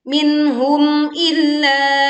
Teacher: Minhum dibaca jelas, tidak melebur ke ha